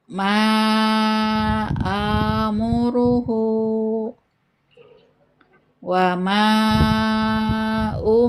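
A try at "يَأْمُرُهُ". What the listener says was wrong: Hu-nya kuatkan lagi dia, didorong dari dada. Hu, coba. Amuruhu.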